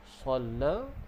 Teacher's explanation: Okay, sad termasuk dalam sifat yang berdesir. Okay, shalla, la bila waqaf dia jadi panjang 2 harakat. Kalau kita sambung, dia jadi mad jaiz.